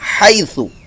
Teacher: ہا کی آواز حلق کے درمیان والے حصے سے ادا ہوگی